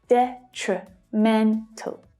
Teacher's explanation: So looking at this word, it's the 3rd syllable that is the strongest. And just like exponential, the first syllable also has a secondary stress.